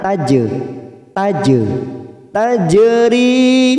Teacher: ada huruf jim sukun, namanya bacaan kolokola sugro, kita pantulkan